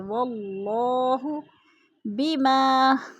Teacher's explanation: الف مدہ کو ایک الف دو حرکات کے برابر کھینچ کر پڑھنا ہے